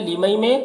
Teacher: लिमई में इदगाम नाक़िस और गुन्ना के साथ पढ़ेंगे।